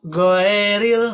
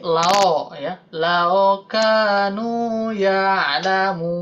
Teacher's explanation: Sedangkan ya sukun menjadi bunyi e gitu. Yang waw jadi o, yang ya jadi e. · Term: kesalahan dialek